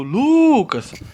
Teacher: perceba que a sílaba tônica da palavra Lucas é Lu